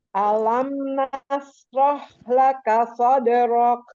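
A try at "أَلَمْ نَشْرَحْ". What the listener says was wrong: Pakai shin. Alam nashrah.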